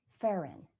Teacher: with the accent on the second syllable